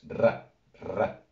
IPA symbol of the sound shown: rː